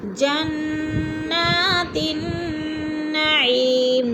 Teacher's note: نون مشدد ہے، سختی سے جما کر پڑھیں گے نون کو، اور عی پہ جے مدہ ہے، جے مدہ کو ہم نے تھوڑا سا کھینچ کر پڑھنا ہے، اور میم کو جو ہے وقف کی صورت میں ساکن کر دیں گے۔